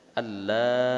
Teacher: masukkan suara nun mati ke dalam huruf lam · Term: idgham bila gunnah